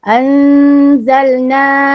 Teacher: Nun mati bertemu zal juga kena dengung.